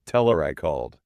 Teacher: The H just evaporates to save lung capacity. · we frequently drop the consonant H on pronouns entirely